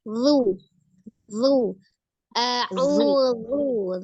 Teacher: Huruf zal makhrajnya ujung lidahnya ada di ujung gigi seri bagian atas.